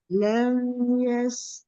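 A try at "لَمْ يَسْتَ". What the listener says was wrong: Jangan lama a tu lama tu.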